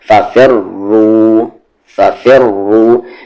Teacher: फ़ी को रा में मिलाते हुए भी हेवी और रू को दोबारा पढ़ेंगे तब भी हेवी